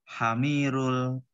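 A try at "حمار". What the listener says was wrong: hamir gimana ada? Kok hamir itu ada alif loh di situ. Masa ya hamir setelah mim itu ada alif? Mana mungkin dibaca hamir? Tidak mungkin baca hamir karena setelah mim ada alif.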